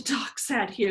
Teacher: there's no nasals in that there should be very little nasal air flow emitted for that production